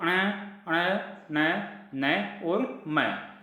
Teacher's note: नासिके में जिन वर्णों को उच्चारण नाक की मदद से होता है, अर्थात जिन वर्णों को जब हम उच्चारण करते हैं तो ध्वनि नाक से निकलती है, और ये नासिक के जो व्यंजन है ये स्पर्श व्यंजन भी होते हैं, क्योंकि पांचों वर्गों की 5 व्यंजन हैं।